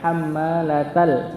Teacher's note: Taknya langsung masuk ke lam yang sukun, bukan hamzahnya. Hamzahnya enggak dikenai, dia tertulis tapi enggak terbaca. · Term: hamzah wasal